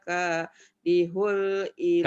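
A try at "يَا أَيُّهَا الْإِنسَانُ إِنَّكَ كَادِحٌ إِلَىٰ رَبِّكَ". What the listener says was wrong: Kadihun. Idhar kok kadihul. Kan idhar itu mah. Kadihun. Bukan kadihul ya. Kadihun.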